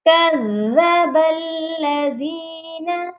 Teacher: زال جو ہے سافٹ لیٹر ہے لیکن یہاں پر زال مشدد ہے، اس پر سختی کرنی ہے لیکن سافٹنس برقرار رہنی چاہیے.